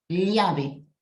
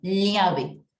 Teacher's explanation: su pronunciación correcta sería algo como una L con una I pequeñita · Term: doble L